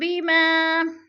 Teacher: الف مدہ کو ہم نے 1 الف 2 حرکات کے برابر لمبا کر کے پڑھنا ہے